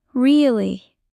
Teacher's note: Voice goes down slowly like you don't believe it.